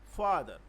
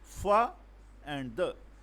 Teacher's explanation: We speak fa little bit louder, little bit high pitch than the fa the. So fa, here fa is a stressed syllable and the is unstressed syllable